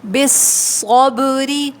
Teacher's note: با پہ قلقلہ ہوگا، آواز پلٹ کر آئے گی